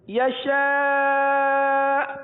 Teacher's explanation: حمزہ ساکنہ کو جھٹکا دے کر پڑھتے ہیں · اب یہاں آخر میں ہلکا سا جھٹکا ہوگا · اچھا یشاء حمزہ پہ پیش ہے یشاء، لیکن جب ہم وقف کریں گے نا تو حمزہ پر جھٹکا دیں گے کیونکہ حمزہ ہو جائے گا ساکن